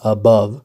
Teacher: an unstressed syllable followed by a stressed syllable